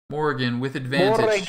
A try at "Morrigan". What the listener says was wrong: Morrigan. You have to roll the R.